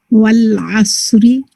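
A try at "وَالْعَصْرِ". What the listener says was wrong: Beautiful.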